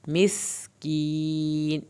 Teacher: सीन पे सीटी की आवाज़ निकलेगी